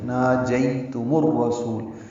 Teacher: میم کو الرسول کی را سے ملا دیں گے. را پر پڑھیں گے، سو واو مدہ ہے، 2 حرکات لمبا ہے.